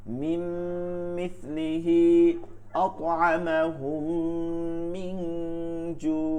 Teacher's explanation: ইদগামে শাফাবির এর হরফ একটি মিম, মিম মিম মিম সাকিনের পরে আবারও মিম। তাহলে মিম সাকিনের বামে মিম আসলে ওই মিমে সাকিনকে গুন্নার সহিত মিলায় পড়তে হয় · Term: ইদগামে শাফাউই